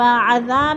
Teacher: الف مدہ کو ایک الف 2 حرکات کے برابر ہم نے لمبا کر کے پڑھنا ہے۔